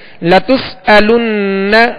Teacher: نون مشدد ہے، اس پر تشدید ہے، اس میں غنہ کریں گے